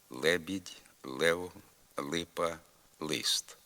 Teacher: звук л перед е та и звучить як нейтральне не тверде і не м'яке злегка пом'ягшене лише середнє л наприклад Лебідь Лев липа лист така